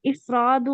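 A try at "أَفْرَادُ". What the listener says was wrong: मजिद क्यों है कि इफराद पे जेर रहेगा, अलिफ पे, हमजा पे, उस पे जब ऊपर लगा है अफराद। अफरादु।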